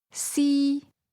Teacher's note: First tone high level